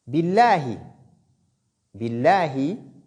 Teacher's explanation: le nom Allah subhanahu wa ta'ala est lu ici avec légèreté de la lettre Lam. Donc on ne dit pas billah.